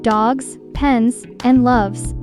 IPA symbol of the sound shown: z